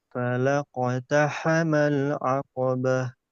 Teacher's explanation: Coba huruf qafnya agak tebal, baru ditipiskan lagi di ba.